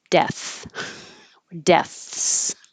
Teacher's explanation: If you don't stop the airflow at all, it'll sound like death, deaths.